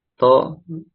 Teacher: To tinggal diangkat pangkal lidahnya. supaya tebal. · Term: huruf itbaq